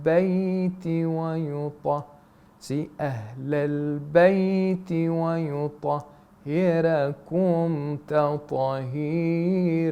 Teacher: he places the stress on the Ahlul Bayt